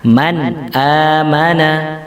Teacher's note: tidak boleh didengungkan suara nunnya, makanya membacanya langsung man amana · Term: dibaca jelas